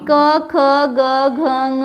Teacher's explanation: क ख ग घ ङ ये कंठ से निकलते हैं